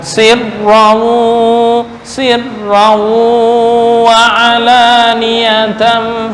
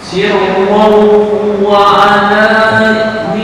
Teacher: sirron ini bertemu dengan wawu, berarti dibaca sirrawu wa alaniyatan